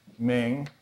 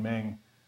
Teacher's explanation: this word Ming second tone versus this one ming fourth tone